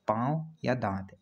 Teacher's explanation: अनुनासिक में नाक से बहुत कम और मुंह से बहुत ज़्यादा सांस निकलती है या हवा निकलती है